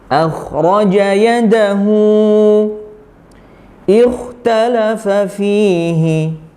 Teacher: Ingat perbedaannya di huruf kha-nya itu dia punya sifat isti'la ya, terangkatnya pangkal lidah kita sehingga menimbulkan suara atau melafalkan huruf kha-nya jadi tebal ya